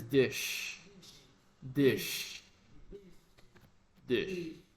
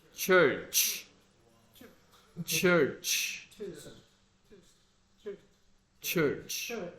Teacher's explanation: But in the church, you have like a T sound before the sh. Ch, ch, ch.